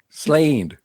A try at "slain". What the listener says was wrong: High. I need it higher.